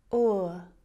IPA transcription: ʊə